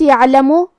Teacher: حرف العین کی ادائیگی حلق کے درمیان والے حصے سے ہے اور جو کہ اس حرف پہ جزم ہے لہذا ہم عین کو ظاہر کریں گے.